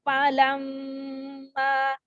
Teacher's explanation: Nah, ada mim bertasydid maka gunnah didengungkan.